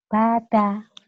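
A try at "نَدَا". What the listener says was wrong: nada. Titiknya di atas Mbak.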